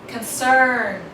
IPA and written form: kənˈsɜːn (concern)